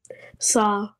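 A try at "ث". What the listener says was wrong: Tha should be more softer. Make it more softer. Tha. So where do you touch your tongue in tha? The edge of the upper teeth.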